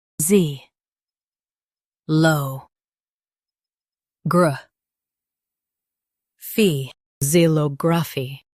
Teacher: Emphasize low and keep gr smooth.